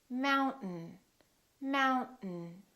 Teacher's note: Don't release your tongue. Keep it up and just go directly to the N.